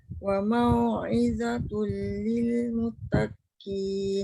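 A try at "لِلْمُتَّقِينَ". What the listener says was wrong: Jangan mutakin. Sabdunya dekat qaf ke dekat ta? Wa mau'izatul lil muttaqin.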